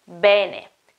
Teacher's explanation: the correct pronunciation is bene, with an open E at the beginning